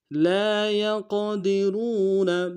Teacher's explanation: وقت کی صورت میں لا يقدرون لام کے ساتھ الف مدہ ہے، ایک الف دار میں کھینچیں گے، یا کو قاف کے ساتھ ملائیں گے، قاف کو موٹا ادا کریں گے، قاف جب ساکن ہو تو حرف قلقلہ میں سے قلقلہ ادا ہوگا، دال کو نون سے ادا کریں گے، را کو واو کے ساتھ ملائیں گے، را کو موٹا ادا کریں گے، واو مدہ ایک الف دار میں کھینچیں گے، نون کو نون سے ادا کریں گے.